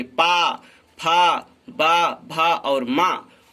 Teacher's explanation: इन वर्णों का उच्चारण स्थान ओष्ठ है और इसको हम ओष्ठ से उच्चारित करते हैं।